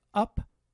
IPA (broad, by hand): ʌp